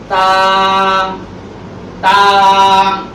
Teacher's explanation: তার উচ্চারণ হচ্ছে জিহ্বার আগা সামনের উপরে দুই দাঁতের গোড়ার সঙ্গে লাগাইয়া চিকন আওয়াজ দিয়া একালিক টেনে বলতে হবে